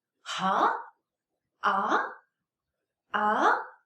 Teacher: second tone is some rising tone rise from level 3 to level 5 pitch it goes up